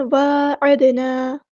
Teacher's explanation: عین کو وسطی حلق مڈل تھروٹ سے ادا کرنا، دال پہ کلکلا ہو رہا ہے تو اس کو ہلائیں گے